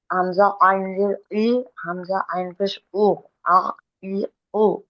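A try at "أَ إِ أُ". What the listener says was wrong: হামজা আইন জের ই না, হামজা আইন জের ইর। বলে আইনকে ধরবো, হ্যাঁ, ইর।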